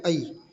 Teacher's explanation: ए और ऐ का उच्चारण कंठ और तालु दोनों के सहयोग से होता है, इसलिए इन्हें कंठ तालव्य वर्ण कहा जाता है।